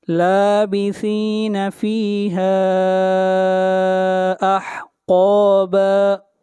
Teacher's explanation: فیہا، یہاں پر مد منفصل ہے، اس مد کو 3 الف کے برابر کھینچ کر پڑھا جاتا ہے. قاف کو موٹا پڑھیں گے، قاف حروف استعلاء میں سے ہے.